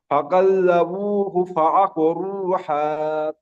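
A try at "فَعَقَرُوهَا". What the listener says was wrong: হা, এটা বড় হা হয়ে যাচ্ছে আপনার, এটা হয় আকারে হা। ফাআকরুহা।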